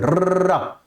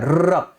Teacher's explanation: र बोलने में भी आपको ऐसा लग रहा है कि इसमें कंपन हो रहा है, र। तो ये हिंदी में मुख्य प्रकंपित जो वर्ड है वो हमारा र है।